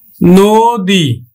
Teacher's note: দীর্ঘইকার আছে, তাহলে আমরা উচ্চারণ করব কিন্তু নো আর দয় রস্বইকারে দি, আমরা দীর্ঘইকার উচ্চারণ করি না, রস্বইকার উচ্চারণ করি